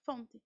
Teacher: Tem uma vogal e um som nasal logo em seguida, né, no final da primeira sílaba